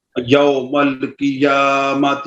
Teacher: قاف کے نیچے زیر ہے، احتیاط سے پر کریں ذرا باریک نہ ہو جائے